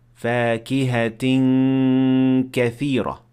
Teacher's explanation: you prepare your mouth to say ka, but not actually saying it while performing the ghunna